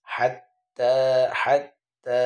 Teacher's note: হার উচ্চারণ কি হবে হলকের মধ্যখান হতে হলক মানে হচ্ছে কণ্ঠনালী গলার মধ্যখান হতে